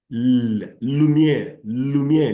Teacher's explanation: if you say L, air comes out from both sides of your tongue. The air escapes like that. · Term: lateral